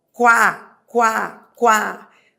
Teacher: Esse u com esse a, qu eu tenho da semivogal para a vogal qu. Esse ditongo é um ditongo que cresce da semivogal para vogal. · Esse ditongo é um ditongo que cresce da semivogal para a vogal. Então, coloque aí, ditongo crescente.